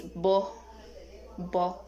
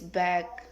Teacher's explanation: Characteristic bilabial, stop, and voice.